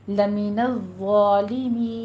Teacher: آخر پہ ہماری مد عارض وقفی ہو جائے گی، اس کو آپ نے 6 کاؤنٹ کرنا ہے